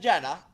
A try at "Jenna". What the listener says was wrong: Not even close. Haina. It's Czech. The J is like a Y.